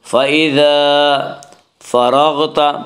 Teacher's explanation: فَإِذَا فَرَغْتَ، را کو پر پڑھیں گے، اس کا قاعدہ ہے کہ را کے اوپر زبر پیش ہے تو را کو پر پڑھا جائے گا، را کے نیچے زیر ہے تو را کو باریک پڑھا جائے گا، را کے اوپر زبر سے را کو پر پڑھیں گے